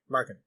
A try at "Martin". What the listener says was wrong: Tin. Martin. You're saying Markin. Yeah, I think his name is Martin.